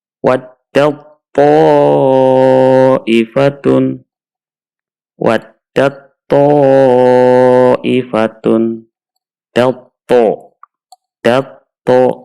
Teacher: Kemudian tak sukun bertemu dengan to. Taknya kita masukkan ke huruf to, kemudian to-nya ditasydid.